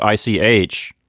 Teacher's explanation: it's like the beginning of the word huge with air pushing over the top of your tongue